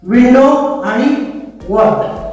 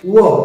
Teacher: परंतु डब्ल्यू चा जो व आहे त्याचा उच्चार करताना आपले जे ओठ ते गोल होतात